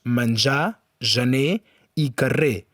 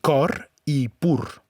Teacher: La lletra R, en posició final, sovint s'emmudeix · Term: R final